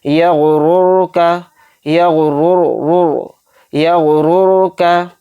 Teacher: और रॉय साकिना से पहले वाले हर्फ पर क्या है, पेश, तो इसलिए ये रॉय साकिना पुर पढ़ी जाएगी, बारीक नहीं पढ़ेंगे। किस तरह से पुर पढ़ेंगे, यगुरुर का, यगुरुर, यगुरुर का, रा पेश रू, बा जबर बा, रुबा, मीम अलिफ जबर मा, रुबमा।